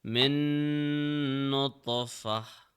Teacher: min, Oh no no taf, not min gunna. We touch the tongue to the roof while applying gunna. We are not applying ikhfa here.